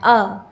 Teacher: संवृत का मतलब होता है सम माने संकुचित अर्थात छोटा, मतलब जिस वर्ण को बोलने में हमारे मुख में छोटा वृत्त बने, यानी हमारा मुख जो है वो कम खुले, ठीक है। तो ह्रस्व अ को बोलने में हमारा मुख कम खुलता है